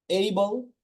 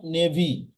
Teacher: dictionary গুলো রয়েছে সেখানে যদি আপনি সাউন্ডটা শোনেন তাহলে বুঝবেন যে এর একচুয়াল উচ্চারণ হচ্ছে এই not এ it will বি এই